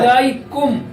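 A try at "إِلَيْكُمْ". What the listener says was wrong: গুন্না করা হলো না, গুন্নাটা আরেকটু লম্বা হবে। আমি বলি একটু শোনো, ইলাইকুম, ঠিক আছে?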